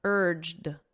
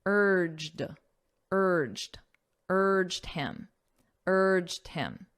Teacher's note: in the past simple listen to my pronunciation urged d d so it ends on a very soft D sound